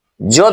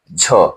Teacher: ज ध्वनि है और ज में ह साट दीजिए तो क्या बनेगा? झ।